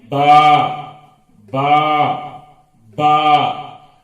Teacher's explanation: یہ دونوں ہونٹوں کو ملا کر کھولنے سے نکلتا ہے با